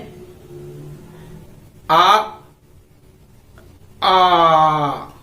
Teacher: तो यहां आ उच्चारित करते हैं तो वो मुंह फैल जाता है, और जब हमारा मुख फैल जाए तो वहां विवृत होता है। · आ ये दीर्घ आ, ये विवृत, मुंह हमारा पूरा खुल जा रहा है। विवृत मतलब पूरा भाग खुला हुआ, या खुला हुआ भाग, या फैला हुआ। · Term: विवृत स्वर